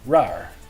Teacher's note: The R is pronounced er in the alphabet, and in this word, raar, if you're good at rolling the R. Some dialects will not pronounce the r, the rolling part of the R. They'll just say raar instead of raar.